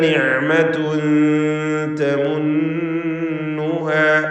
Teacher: നിഅമതുൻ തൻവീനും ശേഷം താഉം ഇഖ്ഫാ ഹഖീഖി നൽകി മറച്ച് മണിക്കണം. മണിക്കലിൽ തർക്കീഖാണ്.